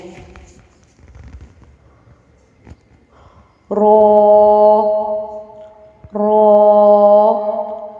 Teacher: زبان کی پشت اور اس کا کنارہ جب ثنایا اور رباعی کے مسوروں سے لگے تو رو ادا ہوتا ہے۔